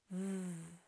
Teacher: of the Sounds in this word v is a vibrating sound it's made by the top teeth going over the bottom lip and it stays there it vibrates